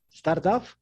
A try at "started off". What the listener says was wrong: Started off. Yes, started off. There's an extra syllable. Started off. Started off. So that T sounds like a D. Started off. Okay, not just started, because yeah, you're gonna show your nationality by not using that extra syllable beat.